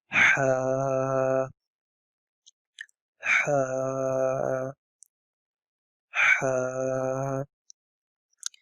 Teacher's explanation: It is an H sound, like H for hen, but it is something that comes from your throat, the middle part of your throat